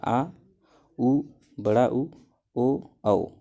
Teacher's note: वे स्वर जिनके उच्चारण में जीभ का पिछला भाग ऊपर उठता है वे पश्च स्वर कहलाते हैं।